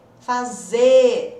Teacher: Olha o R. Gente, cadê o R? Sumiu.